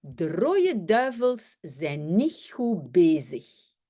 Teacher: le T de niet et le D de goed ne sont pas toujours prononcés non plus.